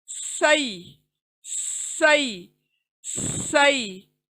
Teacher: सीन की सीटी आवाज